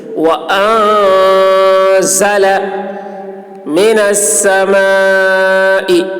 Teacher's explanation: نون میں اخفا ہوگا. اخفا یعنی آواز کو ناک میں لے جا کر تھوڑی دیر چھپا کر گنگنائیں گے